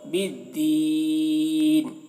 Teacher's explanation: وقف کر رہے ہیں تو کھینچ کر پڑھ رہے ہیں بالدین کھینچ کر.